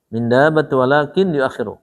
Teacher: Walakin idgham bi gunnah ditahan 2 rakaat. Jangan lupa bi gunnah itu masuk ke hidung.